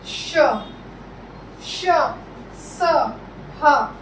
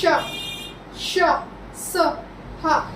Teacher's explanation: जिन वर्णों का उच्चारण करते समय जो वायु हमारे मुंह से निकलती है वो तेजी से निकलकर ऊष्म होकर मुंह से बाहर निकल जाती है, उसे हम ऊष्म व्यंजन कहते हैं।